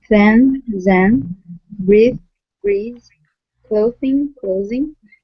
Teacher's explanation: z can be sustained similarly to the th sound the difference there is just the position of your tongue